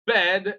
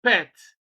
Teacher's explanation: when you produce the sound of P there is no remarkable uh vibration in the Adam's apple · In bed, the B sound is voiced and it is transcribed B. Okay, then in pet the P sound is voiceless, so that is basically the difference.